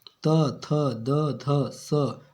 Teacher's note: जिन व्यंजनों के उच्चारण में जीभ की नोक ऊपरी दांतों को स्पर्श करती है दंत व्यंजन कहलाते हैं